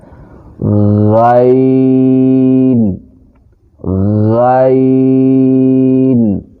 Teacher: یہ حلق سے تھوڑا اوپر کی طرف، جو منہ کی طرف حلق ہوتا ہے، وہاں سے ادا ہوتا ہے، اور یہ لفظ بھی موٹا ادا ہوتا ہے۔